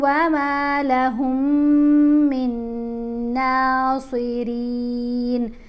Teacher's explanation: یہ میم نہیں پڑھی گئی جو ساکن میم ہے، ہا کو ہم نے مشدد میم سے ملایا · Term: میم کا ادغام